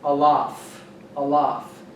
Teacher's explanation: it's a glottal stop pronounced in the back of the throat